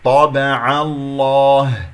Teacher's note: طابع، الطاء مفخمة مرتبة ثانية. العين مفتوحة جاءت قبل اسم الجلال الله، إذا تفخم اللام، لا نفخم العين، نقول طابع الله، لا العين ليست من حروف الاستعلاء، خص ضغط قض، فانتبه. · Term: العين مرققة